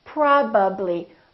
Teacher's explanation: My lips have to open and close 3 times.